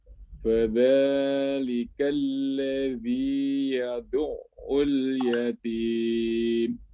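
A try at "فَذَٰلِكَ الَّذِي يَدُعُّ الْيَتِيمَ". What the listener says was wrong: Mumtaz murtafi, barakallahu fiik. Tidak ada koreksi, Pak ya.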